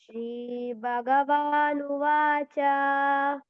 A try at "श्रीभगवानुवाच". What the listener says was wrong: Bhagavan to bha, you can give more stress. Shri Bhagavanuvacha.